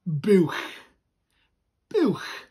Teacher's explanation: That CH sound that comes from the back of your throat